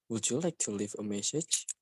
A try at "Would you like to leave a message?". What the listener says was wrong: Okay, so leave instead of leave a, you might want to link the sound. So leave a message. Would you like to leave a message? Would you like to leave a message? So because this is a yes and no question, so you want to raise the tone, raise it. Would you like to leave a message?